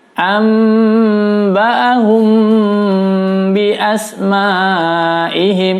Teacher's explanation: Ikhfa syafawi mim sukun bertemu ba juga harus ditahan 4 ketukan.